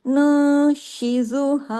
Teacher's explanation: उसके साकिन नून के बाद शीन आ गया, तो यहाँ भी अख्फा हो रहा है